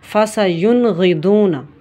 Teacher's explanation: اس کو ہم نے ظاہر کر کے پڑھنا ہوتا ہے، واضح کر کے پڑھنا ہوتا ہے، اس میں تحقیق لانی ہوتی ہے اور ہم نے وہاں پر غنہ نہیں کرنا ہوتا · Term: اظہار